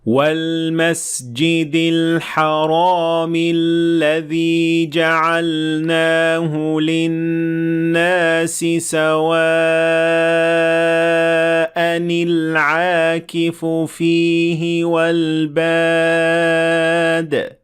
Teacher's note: لفظ سوا کے آخر میں موجود تنوین کو کسرہ ملا تاکہ دو ساکن حروف کو ایک دوسرے کے بعد آنے سے روکا جا سکے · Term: نون قطنی